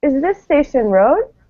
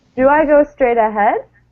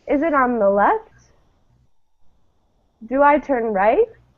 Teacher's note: My voice goes up at the end. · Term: rising intonation